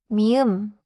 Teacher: 미음 is a nasal. Lips together. hum through the nose.